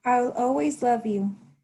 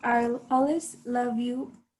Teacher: always love you which they say are always love you because people in yorkshire shorten the word always